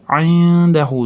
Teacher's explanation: Indahu da nun d ga ixfo bo'lyapti.